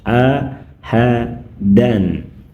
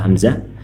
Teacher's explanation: maka suara tanwin an pada ahadan tidak mengalami perubahan, tetap terdengar jelas.